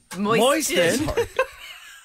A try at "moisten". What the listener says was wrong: Moisten. There's no T.